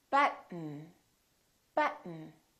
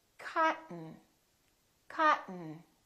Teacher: when a t is followed by an N keep your tongue up don't release it just go directly to the N